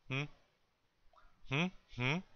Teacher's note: it's like it's coming up between your nose and your mouth